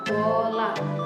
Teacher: vokal yang dihasilkan ketika bibir membulat atau maju ke depan. sehingga membentuk lingkaran kecil. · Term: vokal bulat